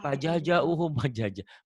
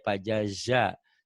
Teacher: Kalau saya dulu pajaja pajaja bukan pajaja pajaza. Jadi kalau orang Sunda jim dan zai seringkali nyatu.